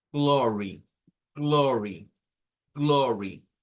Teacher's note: No es como nosotros diríamos glor, no, es glor, glor. Y luego la Y suena al final como I